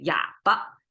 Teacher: And for muted, we always say 哑巴, and it's a light tone again.